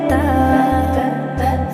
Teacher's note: তায়ের মাখরাজ জিহ্বার আগা উপরের দাঁতের গোড়া লাগিয়ে বলতে হবে তা